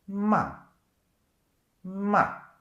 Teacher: the fourth tone which starts high and it goes down